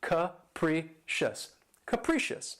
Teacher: The next adjective, which is one of my favorites, is capricious. And this word has 3 syllables, and the stress is on the second syllable. And keep in mind that first syllable has that schwa sound, that capricious.